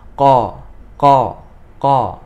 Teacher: qaf memiliki sifat Istiana atau Pangkal lidah ini naik ke atasnya bagian pangkal lidah naik keatas sehingga huruf ini menjadi tebal